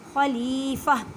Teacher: یہ گول تا ہے، یہ گول تا جب آ جائے، وقف آ جائے، اس آواز کو ہا میں بدل دینا ہے